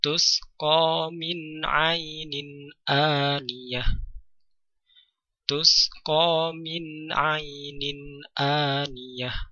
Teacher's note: nun sukun dibaca dengan jelas bertemu dengan ain. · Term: izhar